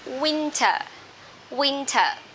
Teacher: we stress in the first syllable